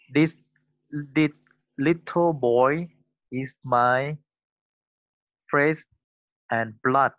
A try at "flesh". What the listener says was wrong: So you have to brush up on this SH sound.